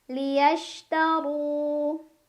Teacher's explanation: Kalau barisnya di atas maka ro-nya tebal. Tebal adalah dengan mengangkat pangkal lidah. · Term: tafkhim